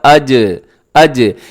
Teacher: اب ویسے تو اس کو قلقلہ کرنا چاہیے کیونکہ جیم حروف قلقلہ میں ہے، ہونا تو ایسے چاہیے تھا اج، اج، لیکن ہم ابھی تک اس کو قلقلہ نہیں کرتے۔